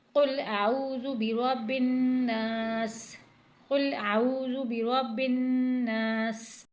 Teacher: سین پر سیٹی کی سی آواز آنی چاہیے، کیونکہ سین سیٹی والا حروف ہے